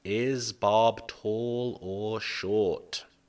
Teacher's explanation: The first adjective, we have a rising intonation.